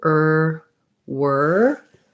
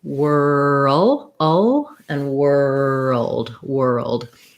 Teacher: building from er and then adding your w er wer and then adding your dark l whirl o and world world so take any of those steps